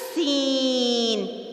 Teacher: سین کی آواز میں سیٹی ہے اور اس کو تیز سیٹی کے ساتھ پڑھا جاتا ہے